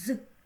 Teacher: Перший звук з: приголосний, твердий, дзвінкий.